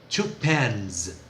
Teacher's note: O plural de caneta, pen, n, é vozeado. Two pens, som de Z.